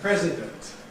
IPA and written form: ˈprezɪdənt (president)